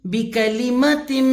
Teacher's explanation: آپ نے یہاں پہ میم کی زبر کو کھینچنا نہیں ہے.